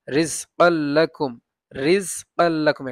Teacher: কাল্লাকুম তানবিনের পরে লাম আসছে ইদগামে বেলা গুন্না, মানে গুন্না ছাড়া পড়তে হয়